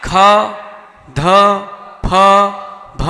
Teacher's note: ख, ध, फ, भ, इनके अंत में हा आता है, इसलिए इसको अपन ने हा किया।